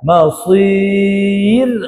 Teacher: ma nipis, sa tebal